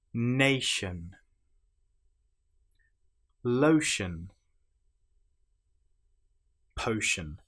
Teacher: the ti here is pronounced exactly the same as the sh sound. But of course, if you don't know this, you may say notion or natian.